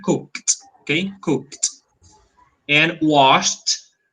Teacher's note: you pronounce the e d like t a very weak tea